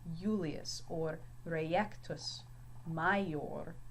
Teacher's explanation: When his name's written in Latin, it is not pronounced Julius, but Julius. So the I has more of a Y sound here